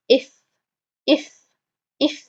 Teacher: you feel a strong stream of air coming out and the lower lips does the work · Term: inside of the lower lip